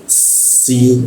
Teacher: huruf si gigi bertemu gigi ya. Lalu ada hembusan udara yang kencang karena rongga udara terbuka lebar